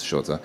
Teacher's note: you start with an S and then you go from the S into the sh sound